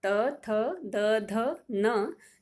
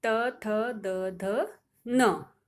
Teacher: त वर्ग बोलते समय सभी वर्णों के लिए हमारी जीभ दांतों को टकराती है। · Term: दंत वर्ण